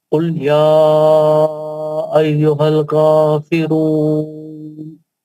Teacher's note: पहली आयत में मद्य मुनफसिल है, इसको 4 हरकत से पढ़ेंगे